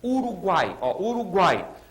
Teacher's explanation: aqueles três sons vocálicos apareceram na mesma sílaba eu não posso dividir aquilo Nesse caso a primeiraa vogal é sempre a semivogal a segunda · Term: tritongo